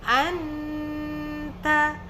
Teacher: nun sukun atau tanwin berjumpa dengan huruf ta bacanya Anta jadi lidah kita itu sudah menuju kepada makhraj huruf ta jadi tidak Lagi singgah di makhraj Nun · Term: ikhfa